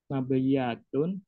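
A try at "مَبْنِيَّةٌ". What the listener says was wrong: Pakai nun. Mabniyatun. Mabniyatun.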